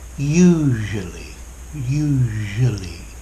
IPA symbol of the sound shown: ʒ